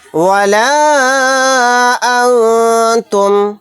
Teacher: لا اعبد ما تعبدون ولا انتم، یہاں پر دیکھیں مد منفصل کا قاعدہ ہو رہا ہے کیونکہ الف مدہ کے بعد حمزہ دوسرے کلمے میں ہے، اس مد کو 3 الف کی مقدار کھینچ کر پڑھیں گے · یہاں پر نون ساکن کے بعد تا آ گیا، تا اخفا کے 15 حروف میں سے ایک حرف ہے، یہاں پر اخفا کا قاعدہ ہوگا، نون کی آواز کو ناک میں چھپا کر پڑھیں گے